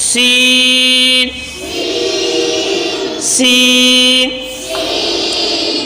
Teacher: زبان کا نوک اور اوپر کے دونوں دانتوں کا اندرونی کنارہ، اس سے سین ادا ہوتا ہے